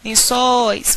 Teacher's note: o o é uma vogal o i é uma semivogal se a vogal é mais longa e a semivogal é a mais curta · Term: ditongo aberto e decrescente